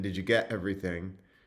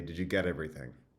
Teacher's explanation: it's more natural for her to say, get with a glottal stop in, did you get everything? Like that. Whereas for me, it's more natural to say, did you get everything?